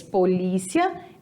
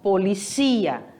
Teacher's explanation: ele tem a mudança de sílaba tônica em português polícia em espanhol policia